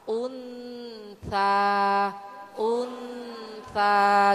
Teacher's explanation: Jadi itu bacaan samar dan dengung ya Bu ya, karena ikhfanya ikhfa ausat ya Bu ya. Jadi Ibu masukkan suara nun ke ta.